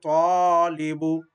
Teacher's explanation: দেখো জবরের পরে খালি আলিফ আছে, বা আলিফের পূর্বে জবর যদি হয় তখন আলিফ মদ হবে, এক আলিফ পরিমাণ টেনে পড়তে হবে, যেন হবে তালিবু।